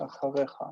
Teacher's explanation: because it's a guttural, instead of saying achrecha, it's going to say acharecha, and just echo the vowel of the first syllable. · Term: echo vowel